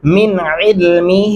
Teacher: ولا یحیطون بشیء من علمہ، بشیء من علمہ. یہاں پہ غنہ بھی کرنا ہے اور عین کو آپ نے گلے سے ادا کرنا ہے